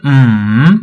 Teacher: M even if you say something just use your voice close your mouth and just make that sound in your you know in your voice like in your throat be like m you see m it kind of falls and then rises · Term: third tone